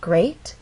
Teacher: That means this is the point where our voice will go up. Great has 1 syllable, so we only have 1 syllable to make our voice glide up. Great. And we're using rising intonation because this question requires a yes or no answer.